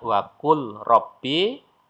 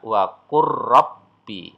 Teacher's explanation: Ya, lam bertemu dengan ro ya. Maka cara membacanya huruf lamnya lenyap. Kemudian langsung masuk ro bertasdid. Maka kalau dibaca apa adanya waqul robbi. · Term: idgham mutaqarribain